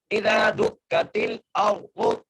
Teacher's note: حمزہ کو را سے ملانا ہے اور آگے ضاد پیش ہے را کو موٹا کر کے پڑھنا ہے ضاد کو بھی موٹا کر کے پڑھنا ہے